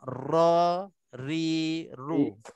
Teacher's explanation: tempat keluarnya adalah lidah, tepi lidah, yang memainkan peranan lidah yang bergegar, yang bekerja, yang bergerak untuk nak keluarkan ra, ri, ru. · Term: ra berbaris atas